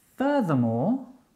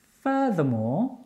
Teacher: Furthermore, the stress on the first syllable